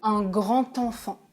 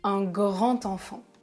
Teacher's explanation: quand il y a un D, je fais la liaison en prononçant T